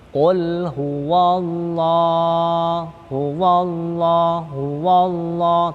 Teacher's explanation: setelah fathah ada lafadz jalalah, lafadz Allah, maka otomatis dibaca tafkhim tebal